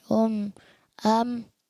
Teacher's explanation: हमजा बा जबर अब, हमजा با زبر اب حمزہ با زیر اب حمزہ با پیش اب اب حمزہ میم زبر ام حمزہ میم زیر ام حمزہ میم پیش ام اچھا بالکل بھی بند نہ کریں، ام یعنی میم کی آواز ساؤنڈ آئے، ام غنہ نہیں کریں گے بہت لمبا، اس کو کہتے ہیں غنہ آنی، جو اپنے مخرج سے فوراً ادا ہو کے ختم ہو جائے